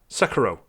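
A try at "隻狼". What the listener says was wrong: I think the correct pronunciation of it is it is like Sekiro, but with a rolled R. Sekiro. That's how you say it. Emphasis on the EH or the KI.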